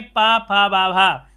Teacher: पा बोल रहे हैं दोनों ओठ मिल गए हैं · दोनों ओठ मिल रहे हैं, और जब दोनों ओठ मिल रहे हैं तो आप कहेंगे ये आपके ओष्ठ व्यंजन हो जाएंगे